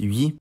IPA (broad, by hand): ɥi